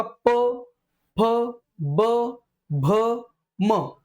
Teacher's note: प फ ब भ म यांचा उच्चार मित्रांनो आपल्याला ओटांचा स्पर्श होतोय की नाही तर प वर्गातील प ब भ आणि म हे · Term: ओष्ट